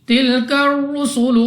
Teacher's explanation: रॉ के ऊपर है पेश, तो रॉ को पुर यानी मोटा पढ़ेंगे · अलिफ से पहले ज़बर अलिफ मद्दा 2 सेकंड तक लंबा करके पढ़ेंगे